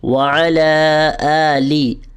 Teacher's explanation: آلے نہیں بولنا، ٹھیک ہے؟ مجہول نہیں پڑھنا آپ نے